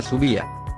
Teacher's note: El hiato también se puede producir cuando se pronuncian de manera consecutiva una vocal cerrada con mayor fuerza de voz o acentuación y una vocal abierta